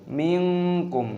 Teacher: sukun nun bertemu kaf dibaca ikhfa ( dikaburkan).